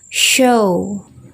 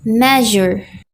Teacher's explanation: use the front of your tongue in the hard palate that's behind the tooth ridge don't create a stop just friction